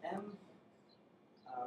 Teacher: Nasal sound, using your lips, is M.